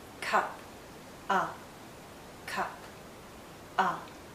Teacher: It's a very short sound and also a very relaxed sound. If you were to hold this sound out, it becomes the sound we make when we're thinking aloud, when we don't know what to say.